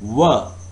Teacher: were is produced with rounded lips